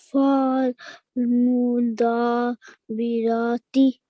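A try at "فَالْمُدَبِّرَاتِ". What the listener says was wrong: Whenever you join, don't make the letter, this letter, don't make it long. Just read it quickly and join on to the next letter.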